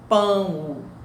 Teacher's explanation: E o O aí vai ser semivogal, porque o O tem um som de U. Nós escrevemos pão com O, mas a pronúncia é um U. Nós não pronunciamos pão O, nós pronunciamos pão, pão. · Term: ditongo decrescente